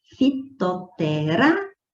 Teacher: Então, veja que o Rá é a sílaba tônica, pico, e é a última, penúltima, antepenúltima sílaba.